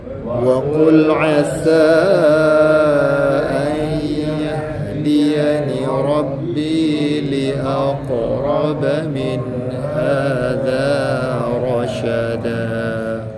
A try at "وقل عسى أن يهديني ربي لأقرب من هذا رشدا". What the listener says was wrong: Kita jumpa satu qalqalah qaf li aqraba, berikan dia masa keluar dulu. Ada orang dah masuk makhraj tapi dia tak terlepas. Dia tak terlepas. Lepaskan, jangan simpan.